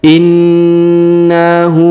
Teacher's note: maka huruf hu dipanjangkan dua harakat